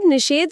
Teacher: नी का ई स्वर जब साधारण स टकराता है तो मुंह के अंदर जीभ की स्थिति अपने आप पीछे की तरफ खिसक जाती है। हम ई बोलते समय जीभ जहां होती है वहां से साधारण स बोलना बहुत मुश्किल है।